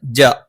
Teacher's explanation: നാവിന്റെ മധ്യഭാഗം മേലെ അണ്ണാക്കിലാണ്